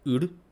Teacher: final r is often colored by the vowel that comes in front of it